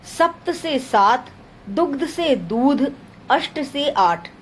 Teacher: दीर्घीकरण, हस्व का दीर्घ हो जाना